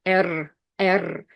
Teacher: And in Russian, we roll our R's